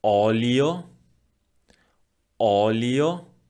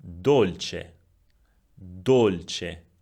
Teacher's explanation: The vowel O could be open, olio, olio, or closed, dolce, dolce.